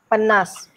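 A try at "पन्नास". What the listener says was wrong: You are saying panna, that last syllable has to be audible. There is no silent in Konkani. Earlier you said panna, panna. You made S silent. We are not speaking French here.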